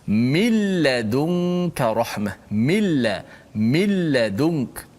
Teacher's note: Okey, pada bacaan nun tu ke mana nun tu pergi? Nun tu dah masuk dalam lam.